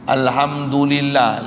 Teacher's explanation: lillah baca lam macam nipis, ma asli la.